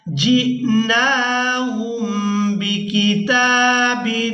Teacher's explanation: جِئْنَاهُمْ بِكِتَابٍ، یہاں تنوین پر اخفا کریں گے، یعنی تنوین میں جو نون کی آواز ہے اس کو ناک میں چھپا کر ادا کریں گے۔